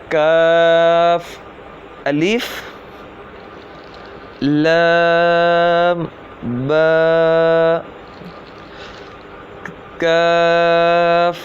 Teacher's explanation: جو کاف ہے یہ زبان کی جڑ اور تالوں کے سخت حصے سے ادا ہوتا ہے